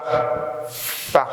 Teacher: the lower lip touches the upper teeth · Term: labiodental